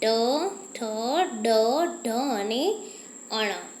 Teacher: આખી જીભ તાળવાની અંદર વારવી પડે છે આપણે ટ બોલવા માટે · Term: મૂર્ધન્ય